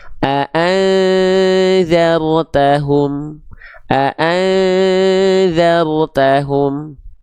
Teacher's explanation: Ya, bunyi an-nya udah nggak ada, tapi bunyi dzalnya belum muncul. Tengah-tengah di antaranya tuh. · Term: disamarkan